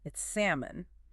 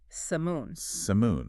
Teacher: That L is totally silent. No sound at all. None. It's not salmon. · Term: silent letter